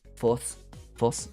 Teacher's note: Because the S and the TH sound are the same sound. Yeah, because there's no TH sound in Japanese, so they just use force